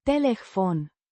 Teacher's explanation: Telefon. Means telephone or phone. Pronounced Telefon. with the stress on the second syllable.